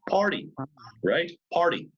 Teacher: T is in the middle position in a word it sometimes changes to a soft T this happens either when it's between two vowels or when it's